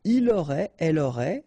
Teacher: final T not pronounced, so phonetically exactly the same form here